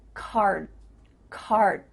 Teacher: D sound but your mouth is making that shape card card my tongue is flat against the roof of my mouth to make the D but it's not coming out · bit different than the word car I drive a car because your mouth is making the shape of that D sound but it's not making the vibrations happening